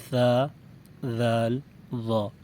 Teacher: زبان کی نوک اوپر کے سامنے والے دانتوں کے سرے سے لگے تو یہ تین حروف ادا ہوتے ہیں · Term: حروف لثویہ